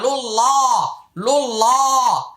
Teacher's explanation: রসু, লাম লাম পেশ লুল, লাম খারা যাবে লা, লুল্লাহ, লুল্লাহ, হাজের হি, লুল্লাহি। আল্লাহ শব্দের পূর্বে পেশ আসছে তাই এটা মোটা হবে। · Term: আল্লাহ শব্দের লাম মোটা